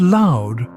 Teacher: The word loud contains the diphthong OU. Here, the sound begins at O and moves toward U. You see, the beauty of diphthongs is in the smooth transition between the two vowels.